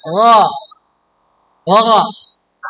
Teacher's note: pangkal lidahnya harus naik. Tidak ada udaranya, tetapi suaranya mengalir. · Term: huruf ghain